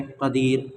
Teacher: قدیر وقف کی حالت میں، اور را کو باریک کر دیں گے